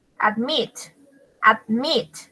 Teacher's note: También lleva la sílaba entonada en la última, en meet. Admit.